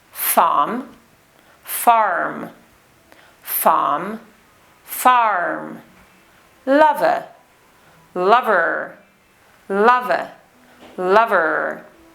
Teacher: In received pronunciation, we do not pronounce the letter R in these words, but in the West Country accent, we do, the rhotic R.